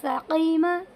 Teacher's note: قاف کو حلق سے نکال کر ساقیمہ